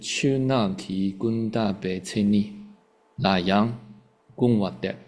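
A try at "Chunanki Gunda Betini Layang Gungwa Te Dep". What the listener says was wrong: Te. You skipped the te. Not dep. Te.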